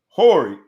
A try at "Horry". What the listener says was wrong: Ori, the H is silent.